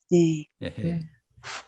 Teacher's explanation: 흐 발음은 목소리입니다. 목에서 나는. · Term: 후음